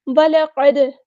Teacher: ला हमारा बारीक लेटर है और क़ाफ़ हमारा हेवी लेटर है, पूरा अदा करेंगे, दाल साकिन पे कलकला हो रहा है।